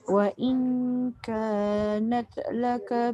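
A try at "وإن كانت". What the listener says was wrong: jangan nat dia jadi qalqalah.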